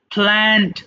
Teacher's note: first letter যদি পি থাকে তাহলে আমরা ফ, দুই ঠোঁট একসাথে করে উচ্চারণ করব